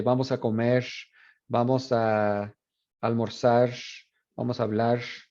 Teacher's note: asimilación de R en posición final. This is Mexican Spanish.